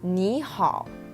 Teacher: both these characters have the third tone